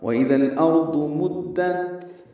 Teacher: ضاد پر ہے، موٹا پڑھیں گے، حروف مستعلیہ میں سے ہے۔ مدت، دال باریک ہے، تا سے ملائیں گے، تا نرمی سے پڑھیں گے اور اس پہ ہمس ہوگا